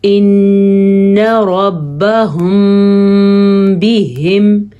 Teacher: میم ساکن کے بعد جب با آ جائے تو وہاں پہ اخفاء شفوی کا قاعدہ ہوتا ہے، وہاں پہ ہونٹ بند ہو جاتے ہیں